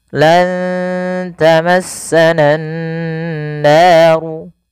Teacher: Kemudian pada lafal nan naru, usahakan kita menahan bunyi suara nunnya karena pada lafal ini ada bacaan gunnah, yaitu dengan menahan suara nun dan memasukkan ke rongga hidung kita